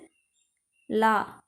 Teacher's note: நாவின் இரு பக்கங்கள் தடித்து மேல் பற்களின் அடியை தொடுவதால் தோன்றும் எழுத்து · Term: வகர லகரம்